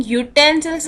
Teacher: Why? Because when I'm speaking utensils, I'm using consonant sound y before it